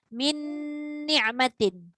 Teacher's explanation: Dia kena lekatkan lidah pada tempat keluar nun dan masukkan balik semula pada nun tu juga. Maknanya dia betul-betul rapat nun dengan nun.